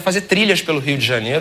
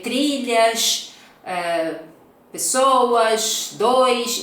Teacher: nós lembramos do S muito forte, muito chiado